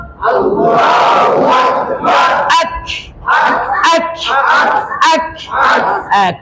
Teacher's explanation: কাফের উপর যখন সাকিন আসে তখন এভাবে একটু বাতাস বের করতে হয়। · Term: কলকলা